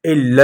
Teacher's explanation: لام کو باریک پڑھیں گے۔